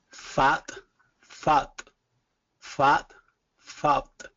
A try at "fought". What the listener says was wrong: A little bit more of a jaw drop for the second one. Fought, fought. So it's just the one vowel here. So the second word is going to be fought, fought, fought. Just like got or hot.